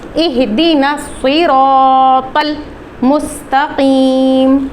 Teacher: تو ہم حمزہ الوصل کے بارے میں پڑھ رہے ہیں، یہاں پہ اگر ہم اس حمزہ کو دیکھیں تو یہ سٹارٹ میں آ رہا ہے اہدنا الصراط، لیکن کیونکہ یہاں پہ یہ اس حمزہ کی اپنی آواز گر گئی ہے، یعنی نون کو ہم نے ڈائریکٹلی آگے والے صاد سے ملا دیا، تو اس حمزہ کی آواز یہاں پہ گر گئی، اس کو ادا نہیں کیا گیا۔